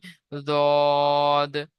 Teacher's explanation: হয় জিমশিন ইয়া সাত নম্বর মাখরাজ জীবের কিনারা এবং সামনের জীবের জীবের কিনারা এবং তার বরাবর উপরের তালুর মাড়ির দাঁতের গড়ার সাথে লাগিয়ে উচ্চারিত হয়